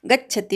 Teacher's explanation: गच्छति मधल्या ग वर आघात घ्यायचा, शेवटचा ती ऱ्हस्व आहे, पटकन उच्चार करायचा